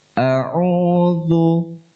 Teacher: Dan zal itu dibaca tipis.